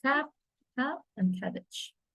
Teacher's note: The manner of articulation is plosive, occur when a complete closure is made somewhere in the vocal tract. Place of the articulation is bilabial, formed with the two lips.